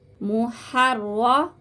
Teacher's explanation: محررا، ٹھیک ہے، یہاں پہ ادغام کا گنہ کریں گے، محررا، را کو موٹا کر کے پڑھیں گے، تشدید کو بھی ظاہر کریں گے یہاں پہ